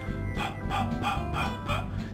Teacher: So for that sound, I only need to push the air out. So I need to hold my lips together and say p, and let it go. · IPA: /p/